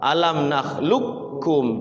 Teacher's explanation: tidak ada hukum qalqalah, langsung masuk ke kaf. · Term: idgham mutaqariban